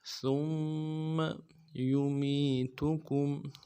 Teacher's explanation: ثُمَّ میں ثا کو میم کے ساتھ ملانا ہے، میم کے اوپر تشدید زور دیں گے